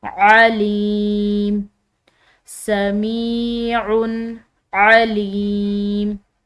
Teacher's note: میم کے بعد یا ساکن آ رہی ہے، جس کی وجہ سے ہم نے اس میم کو ایک الف کی مقدار لمبا ادا کرنا ہے۔ علیم، سمیع، علیم، یہاں پر بھی لام کے بعد یا ساکن ہے، تو ایک الف کی مقدار اس کو بھی کھینچ کر ادا کرنا ہے۔